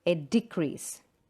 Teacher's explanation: So in noun, the first syllable is stressed.